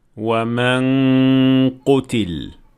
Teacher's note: And here you anticipate the qaf, so you form your mouth as if you're about to say qaf, but not actually saying it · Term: ghunna